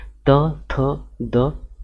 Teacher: जीभ की नोक द्वारा ऊपर के दांतों को स्पर्श करने पर उच्चारित होती है, दंत व्यंजन कहलाती है